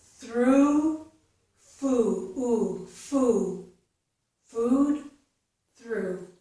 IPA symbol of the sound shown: u